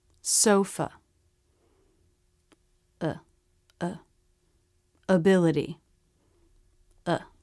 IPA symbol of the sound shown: ə